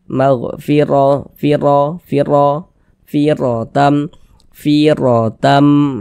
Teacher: Huruf ra itu kalau dia memiliki harokat fathah seperti ini dibaca tabkhim, baca tebal, sehingga pangkal lisan kita naik terangkat ke atas ketika kita mengucapkannya. Tebalkan huruf ra-nya.